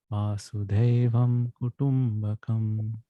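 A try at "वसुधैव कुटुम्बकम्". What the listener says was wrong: Here it is not Vasudevam. It's not Krishna. It is Vasudha. Dha is Mahaprana. Vasudhaiva Kutumbakam. Initially, even I had this confusion when I started. I used to think it is all Krishna's family, but that's not true. Later, I came to know that it is Vasudhaiva. It is all Bhumi, Vasudha. Vasudha is the earth, Mother Earth.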